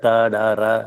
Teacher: நுனிநாக்குல பிறந்தா டா, டா, ரா அதெல்லாம் பிறக்குது